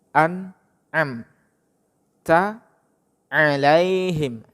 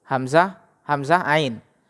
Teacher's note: Am, ya, hamzah dulu, kemudian baru ain, ya.